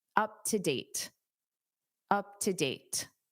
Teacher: because date ends the sentence and you naturally take a pause anyway, you can pronounce that T.